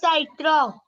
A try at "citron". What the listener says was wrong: सिट्रॉन, ठीक, साइट्रॉन है, English की तरह प्रोनाउंस नहीं करना है, सिट्रॉन।